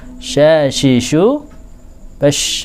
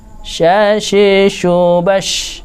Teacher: Insyaallah itu shin. Shin menika piyambak anggadhahi swanten ingkang kesarengan ambyaripun nafas ingkang kiyat atau tafasyi.